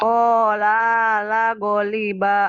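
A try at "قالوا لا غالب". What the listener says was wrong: la-nya yang kedua pendek. Yang pertama pendek, yang kedua panjang. Tekan di yang kedua.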